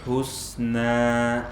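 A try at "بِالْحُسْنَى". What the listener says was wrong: Antum lamnya masih tebal ketika sukun. Bil.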